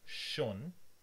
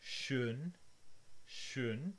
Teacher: If you change schon into schön, schön with rounding, the meaning changes